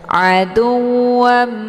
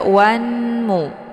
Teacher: tanwinnya langsung dimasukkan ke dalam huruf mim yang bertasdid dengan cara ditekan kemudian ditahan lebih kurang dua harakat sehingga terbentuk suara yang mendengung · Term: Idgham Bi ghunah